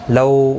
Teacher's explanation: لو واولین ہے، تھوڑا نرمی کے ساتھ کھینچ کر ادا کریں گے